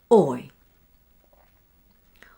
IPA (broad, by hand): ɔɪ